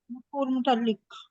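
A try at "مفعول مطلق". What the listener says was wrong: मुताल्लिक नहीं, मफऊल मुतलक, मुतलक।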